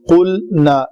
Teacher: قلنا لام کو قلقلہ ہونے سے بچانا ہے